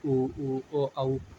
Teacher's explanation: वृत्तमुखी जिनके उच्चारण में होंठ गोलाकार हो जाता है